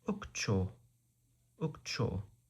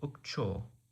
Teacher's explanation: With a stress on the final syllable.